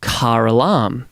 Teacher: So, in Australian phonology, right, we are a non-rhotic English dialect, but not consistently, right? Because when there is a vowel that follows a word that ends in R that we would normally drop the R off from, such as car, we put it back on